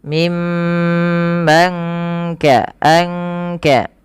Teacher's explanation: ikhfanya itu menyamarkan nunnya kepada huruf Kaf